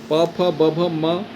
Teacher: प, फ, ब, भ, म तो इनका उच्चारण ओठ से किया जाता है। तो ये हो गए स्पर्श व्यंजन। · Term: प वर्ग